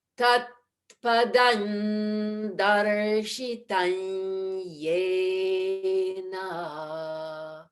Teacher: Tat padan darsh. And then at the end of darshitan, we go back to the soft palate so that we're with the Y sound, the ya. So to put those together, tat padan darshitanyena. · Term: Anusvara Sandhi